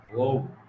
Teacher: হচ্ছে ও, অর্থাৎ কণ্ঠ থেকে নির্গত হয়ে আসে এবং আমরা ঠোঁট দ্বারা সেটাকে উচ্চারণ করি, ও। এই জন্য এটা কণ্ঠস্থ, কণ্ঠ প্লাস ওষ্ঠ, অর্থাৎ কণ্ঠ যোগ ওষ্ঠ মিলে উচ্চারণ হয়, জন্য এটাকে বলে কণ্ঠস্থ।